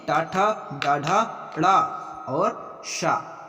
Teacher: मूर्धा में टाठा, डाढ़ा, ड़ा और शा, ये सारे आते हैं वो मूर्धा में।